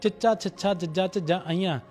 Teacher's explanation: ਇਸ ਨੂੰ ਬੋਲਣ ਲੱਗਿਆਂ ਜੀਭ ਸਾਡੇ ਤਾਲੂ ਨਾਲ ਲੱਗਦੀ ਹੈ ਇਸ ਕਰਕੇ ਇਸ ਨੂੰ ਤਾਲ ਵੀ ਧੁਨਿਆ ਕਿਹਾ ਜਾਂਦਾ ਆ।